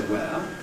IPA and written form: weə (where)